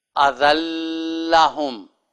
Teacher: غننے کی آواز کوئی نہیں کیونکہ آگے دوسرا حرف جو لام ہے، تنوین والے کے بعد دو زبر، دو زیر، دو پیش کو تنوین کہتے ہیں، تنوین والے کے بعد لام آیا اس لیے غنہ نہیں ہوگا۔